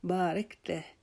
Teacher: را کو تھوڑا سا موٹا کریں گے کیونکہ را کے اوپر زبر آ گئی ہے، پھر آگے ڈنڈی والے کاف کو باریک کریں گے، بارکتہ، تا کو بھی باریک کریں گے.